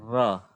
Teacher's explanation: इसका जब उच्चारण करते हैं जैसे र तो हमारी जीभ क्या होती है? तलवे से लिपट जाती है। यानी गोला आकार बन जाता है। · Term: लुंठित ध्वनि